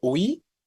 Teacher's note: por la forma en la que lo pronunciamos, la I está sonando fuerte. Si yo digo UI, claramente podemos identificar cómo la I es tónica.